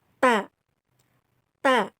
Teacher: bertemunya ujung lidah dan ujung gigi bagian atas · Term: huruf t